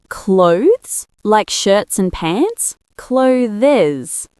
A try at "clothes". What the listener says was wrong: Ah, that's the mistake. You're saying clothes with 2 syllables and a Z at the end. It's actually clothes, 1 syllable, and it ends with a th-Z sound, not just Z. Yes, clothes. It rhymes with oaths, not closes.